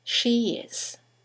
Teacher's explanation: there is a semi-vowel, y, that links the vowel at the end of she to the vowel at the beginning of is